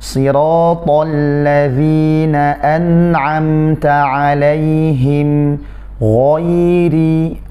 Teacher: Ghain di sini tebal, kemudian ya dan ro-nya tipis. Ya, ghain dulu ditebalkan, ghairi, ya.